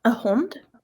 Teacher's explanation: I heard some nasalization the first time.